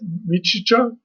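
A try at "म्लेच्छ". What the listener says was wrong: Mlecha. I think it's Mleccha. Mlecha. No, the I is where the L is, and it's only one E.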